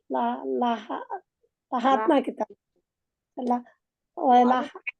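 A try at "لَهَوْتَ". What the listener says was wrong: লাহাওতা বলেন ওখানে, লাহা ওয়াতা হবে না। ওই আপা লাহা ওয়াতা বলছে, এই জন্য বললাম।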